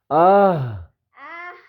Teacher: ہا سینے کی طرف سے، اندر سے اندر، یہ نیچے کی طرف سے آئے گی اور گلے سے ادا ہوگی